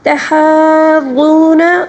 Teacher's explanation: کلا بل لا تکرمون الیتیم ولا ولا تحاضون، یہاں پر مد متصل ہے، اس کو 5 الف کے برابر کھینچ کر پڑھیں گے. تحاضون، غاد کو پر پڑھیں گے اور واو مدہ کو 1 الف کے برابر کھینچ کر پڑھیں گے